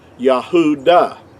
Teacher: in our English we say Judah which is totally inaccurate because there's no J sound in ancient Hebrew but the word uh Judah in our English word would be uh would be accurately would have been pronounced Yahudah.